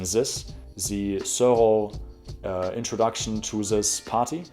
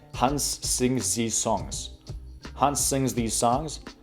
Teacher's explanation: So basically what most older Germans do in the so-called, what I like to call the Hollywood accent, is pronounce the TH like an S or a Z